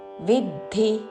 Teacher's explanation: రాగాత్మకం విద్ధి, విద్ధి కాదు విద్ధి, వి మీద ఆఘాతతో విద్ధి, రెండు హ్రస్వాక్షములు.